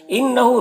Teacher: نون مشدد غنہ کے ساتھ پڑھیں گے، ہاں میں الٹا پیش ہے، یہ اسے 1 الف کے برابر کھینچیں گے۔